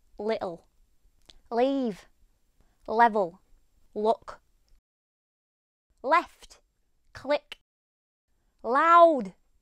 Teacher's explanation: Across many northern counties, including Yorkshire, you will often hear a light L being sounded as a dark L. What I mean is, rather than uhl, you'll hear ohl.